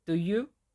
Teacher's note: Low rise pattern. You start low and then you go up. This is used when forming questions.